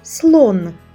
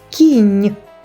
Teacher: словах Слон і кінь у кінці чуємо приголосний звук н але слон закінчується твердо кінь закінчується м'яко